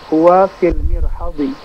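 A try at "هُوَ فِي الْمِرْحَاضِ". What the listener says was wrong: Mirhadi. Hanya dipanjangkan.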